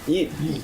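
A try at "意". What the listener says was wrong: Yeah, more why. Don't say eat. Yeah, yi. Clear yi. Yeah, yi. It's not like I'm hungry. Okay, yi.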